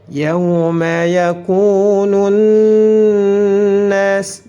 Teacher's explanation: Yaku panjang 2 harakat, waw sukun sebelumnya dhammah. Kemudian nun langsung masuk ke huruf nunnya, tidak dibaca alif lamnya karena disebut dengan idgham syamsiyah.